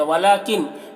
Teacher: नून में इख्फा हो रहा, नून की आवाज़ को नाक में छुपा कर पढ़ेंगे।